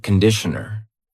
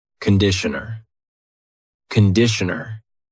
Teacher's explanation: The first vowel is a schwa.